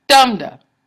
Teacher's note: that's when you have the stressed syllable first and then the soft syllable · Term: trochee